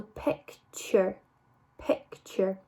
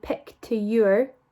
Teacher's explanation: when we put the t in front of our ur sound it kind of makes it sound like a ch